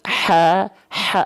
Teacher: sampai terlalu ke bawah kalau terlalu ke bawah jadinya hak besar harusnya tepat dari tengahtenggorokan nafasnya berbisik bukan nafas yang biasa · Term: hak kecil